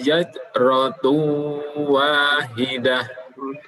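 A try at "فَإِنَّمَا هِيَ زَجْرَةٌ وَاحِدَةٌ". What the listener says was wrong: Baik, di situ ada zai dan ja. Zaj. Yang kedua dikolok-kolokkan. Fa innama hiya zaj. Zaj.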